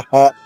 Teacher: ఢాకి ఒత్తుంది కాబట్టి నొక్కి చెప్పాలమ్మా.